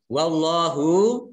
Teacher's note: Allahnya dibaca tebal karena huruf di depannya harokatnya fathah.